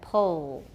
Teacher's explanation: We've got a lot of tightness in the back of the tongue. It's getting close to the soft palate. That's velarization. · it can be considered as the addition of an oolike tongue position but without the addition of the lip rounding that also occurs in ooh so if we add then we're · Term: dark L, Dark L